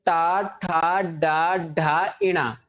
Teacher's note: जीभ का आगे वाला हिस्सा ऊपर कहां पर टच करता है मुर्धा में मुर्धा में ना पूरी तरह से जी तालू में टच नहीं · इनका जब आप उच्चारण करोगे तो आपकी जीभ जो है, जीभ का आगे वाला हिस्सा ऊपर कहां पर टच करता है? मूर्धा में।